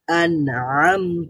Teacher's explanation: করার প্রয়োজন নাই এখানে গুন্না করার প্রয়োজন নাই তার মানে হচ্ছে নুনের যে সিফাত সেটা হচ্ছে বাইনা বা আওয়াজটা পরিপুরি বন্ধ হবে না জারি হবে না · নুনের যে সিফাত সেটা হচ্ছে বাইয়িনা, বা আওয়াজটা পুরোপুরি বন্ধ হবে না, জারি হবে না, স্বাভাবিক, মানে একেবারেই মধ্য পন্থা অনুযায়ী থাকবে, তো আংশিক জারি থাকবে।